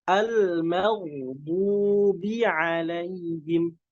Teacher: Huruf ba-nya tipis, disempurnakan kasrohnya.